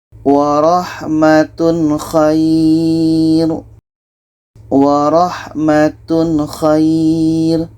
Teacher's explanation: Warahmatun khair. Tanwin jelas, kha jelas, dan tidak ada dengung. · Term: izhar halki